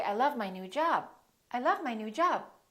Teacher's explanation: you can hold the B you can hold the stop